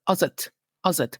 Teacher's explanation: this as het is pronounced as if it was only one word